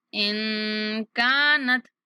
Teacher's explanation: نون پر اخفا کریں گے اور کاف کو کھینچیں گے